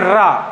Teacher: ऐसा वर्ण जिसके उच्चारण में या जिनके उच्चारण में बोलते समय जेवा क्या करती है कंपन करती है · अब रा को बोलकर देखिएगा तो जिह्वा क्या करती है, कंपन करती है, एकदम रा थर्राती है ना कहीं कंपन होता है, तो रा हो जाएगा। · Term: लुंठित, प्रकंपित व्यंजन